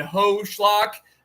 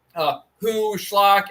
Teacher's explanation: the Yemenite Jews will make a difference between a holem vav O and a shurik U. Okay, in Arabic, there is no distinction, but the Yemenite Jews actually make a distinction between these two vowels.